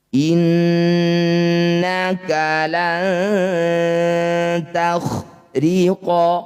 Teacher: Disebut bacaan gunnah musyaddadah, bunyi nunnya kita dengungkan 2 harokat.